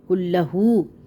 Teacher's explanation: کاف کو لام کے ساتھ ملانا ہے کیونکہ لام کے اوپر مشدد ہے، اور مشدد ورڈ دو بار ادا کیا جاتا ہے، ایک بار ساکن ایک بار حرکت والا۔ کاف لام پیش کل لام زبر لا، کل ہا الٹا پیش ہو، کلہو، ٹھیک ہے۔